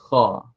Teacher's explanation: Maka getaran dekat belakang tekak tu, situlah tempat dia, pangkal kerongkong. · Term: huruf kha